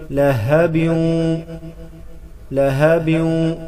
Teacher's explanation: ہا کو گلے کے اس حصے سے ادا کریں گے جو سینے کی طرف ہے